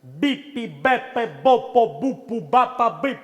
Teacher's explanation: the explosive sound, which is b and p, they're explosive, they like explosion on the lips. So exaggerated, do it too much, like just shoots out.